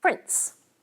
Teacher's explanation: a little alveolar stop finds its way between the alveolar nasal and the alveolar fricative.